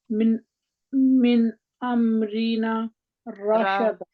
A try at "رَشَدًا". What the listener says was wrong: من امرنا رشدا دا لمبا کرنا ہے نا